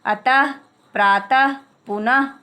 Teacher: विसर्ग का उच्चारण हल्के हा के समान होता है